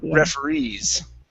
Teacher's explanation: the stress is at the very end